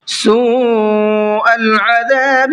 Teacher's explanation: یسومونکم سوء العذاب، یہاں پر دیکھیے واو مدہ ہے اور اس کے بعد میں حمزہ اسی کلمے کے اندر ہے جس میں واو مدہ ہے، تو یہ مد متصل کا قاعدہ ہے، اس لیے اس مد کو 4 سے 5 الف کی برابر کھینچ کر کے پڑھنا ہے